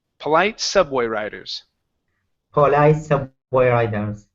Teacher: So you stress the word riders, saying polite subway riders.